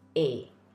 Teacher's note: Very similar to the English vowel sound in play, except there's no diphthong at the end, just the A sound.